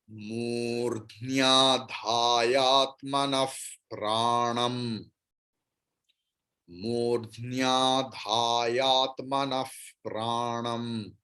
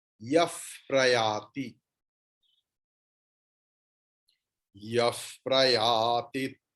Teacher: বিসর্গর পরে প আছে, তাই বিসর্গর উচ্চারণ ফ এর মতো হবে।